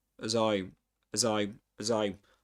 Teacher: the z here connects the two words